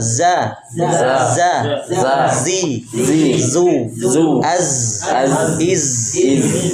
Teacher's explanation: ujung lidah pada posisi dua gigi seri bawah lalu suara keluar melalui celah di antara dua gigi seri atas dan bawah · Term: huruf Zai